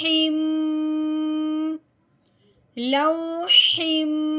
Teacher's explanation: میم کا غنہ ہوتا ہے منہ بند کر کے ناک میں سے آواز نکالنا ایک الف کے برابر لمبا کر کے۔ تو اب ہم نے کیسے پڑھنا ہے؟